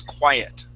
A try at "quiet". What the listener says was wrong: You had said quit.